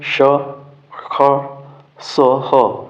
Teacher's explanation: संघर्षी व्यंजन श, ख, स, ह केवल घर्षण होता है